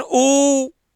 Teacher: आ में भी गोल नहीं बन रहा, लेकिन ऊ ओठ आगे आ गए, इसका मतलब गोल बन रहे हैं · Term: वृत्ताकार स्वर